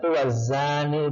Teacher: Jadi al-nya itu tidak dibaca, dimasukkan ke huruf selanjutnya. Karena alif bertemu huruf syamsiyah yaitu za. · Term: al-syamsiyah